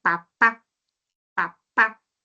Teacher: Yo pronuncio una palabra, papá, papá. Se obstruye cuando pronuncio el sonido de la P. Ahí se obstruye, punto de articulación bilabial, ¿no? Pero según el modo de articulación, o sea, cómo sale el aire después de la obstrucción, es oclusiva.